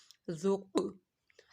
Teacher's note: ادھر قاف کلکلا والا ہے، یہاں پہ کلکلا ہو رہا ہے، ذال کو نرمی کے ساتھ پڑھا گیا ہے